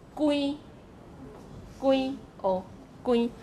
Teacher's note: this is the nasalized vowel, just like the French nasalized vowel